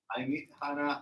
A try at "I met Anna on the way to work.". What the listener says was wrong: I met. There's no Hannah because there's no H. So I met Anna. So you see here, it says, I met Anna.